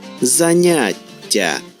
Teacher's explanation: Ми чуємо подовження м'якого приголосного ть, яке на письмі відображається двома літерами.